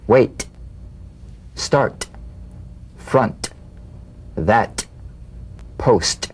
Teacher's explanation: The same staccato springing action as the D drum beat, with no voice, forms the light tap of the T. Feel a gentle pulsation in the tongue.